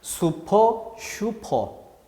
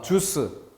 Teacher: 그런데 지읒은 센 소리였고 지읒이 세기 때문에 나머지 우와 유가 온전히 구별될 수 없다